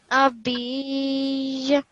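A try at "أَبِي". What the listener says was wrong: No, not abi. It's abi. You're not doing a waqf here. So it's not abij.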